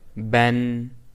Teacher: This is because Tanween is pronounced as a Noon Saakinah at the end of nouns, but is written as a double haraka. So, Ba Tanween Fatha is pronounced as Ba with Fatha plus Noon Saakinah.